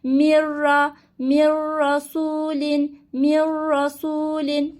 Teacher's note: lamra gelirse lam rayya bağlayarak okuyacaktı O zaman nasıl okuyacağım m nun sesini ra harfine bağlayarak okuyacağım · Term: idgamı bila gunne